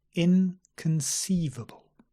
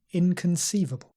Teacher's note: and notice the schwa not con